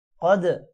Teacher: قوف موٹا ہوگا، جزم کی وجہ سے دال کے ساتھ ملے گا اور دال پر قلقلہ بھی ہے